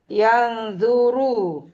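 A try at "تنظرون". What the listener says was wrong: ada taknya begitu.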